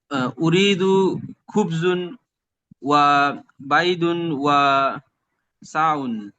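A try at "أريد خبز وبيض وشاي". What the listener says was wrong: এই বলার সময় শব্দর শেষ বলতে হবে না। খুবস, বাইদ,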